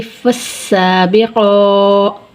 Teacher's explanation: قاف کھڑی زبر قا، قاف کو پر پڑھیں گے